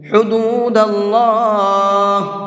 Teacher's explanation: اللہ کے لام کو منہ بھر کے پڑھیں گے، یعنی کہ پر کر کے پڑھیں گے، اس لیے کہ اللہ کے لام سے پہلے زبر ہے، اور اللہ کے لام سے پہلے زبر ہوتا ہے تو اس اللہ کے لام کو پر کر کے پڑھتے ہیں، منہ بھر کے پڑھتے ہیں۔